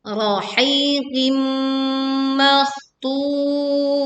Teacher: leburkan kasrah tanwin kepada mim dengan disertai dengung